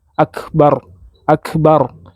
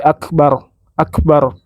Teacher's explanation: sementara huruf kaf Ketika dia sukun itu diikuti dengan ee udara sedikit